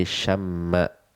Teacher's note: dua huruf mim di akhir akhirnya diidghamkan saja, ditasydid sehingga menjadi syamma, ya syamma, sehingga kita hanya perlu menyentuh makhrajnya satu kali saja